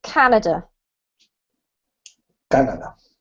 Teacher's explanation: the word has the emphasis on the first syllable, so it's Canada.